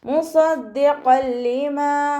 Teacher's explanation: തെൻവീനിന് ശേഷം ഇദാം ബിലാഗുന്നയുടെ അക്ഷരമായിട്ടുള്ള ലാമാണ് വന്നിട്ടുള്ളത്. തെൻവീനിനെ നമ്മൾ ലാമിലേക്ക് ലയിപ്പിക്കുന്നുണ്ട്, പക്ഷെ ഉന്ന കൊടുക്കാതെ ഓതി കൊടുക്കുക, മണിക്കാതെ ഓതി കൊടുക്കുക കേട്ടോ.